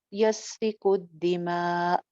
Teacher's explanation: हमजा जब साइलेंट होता है तो एक झटके की सी कैफियत पैदा होती है, क्योंकि आवाज और सांस दोनों रुक जाते हैं।